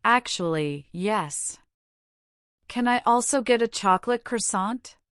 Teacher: When asking, "Can I also get a chocolate croissant?" your voice should rise slightly on croissant to indicate a question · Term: the intonation